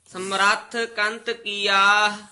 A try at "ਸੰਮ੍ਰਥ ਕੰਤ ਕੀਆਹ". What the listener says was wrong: ਸਮਰਥ ਸੇ ਉਤੇ ਟਿਪੀ ਹਨਾ